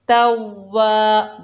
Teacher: वाव के ऊपर ज़बर, आगे अलिफ खाली है, ये अलिफ मद्दा है, एक अलिफ की मिकदार खींच कर पढ़ेंगे